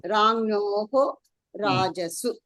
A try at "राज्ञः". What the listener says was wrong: మీరు జ్ఞా జ్ఞా అనేది కొంచెం సరిగ్గా పలకట్లేదు. రాజ్ఞ జకారము ఇడి జ్ఞ రాజ్ఞ రాజ్ఞ.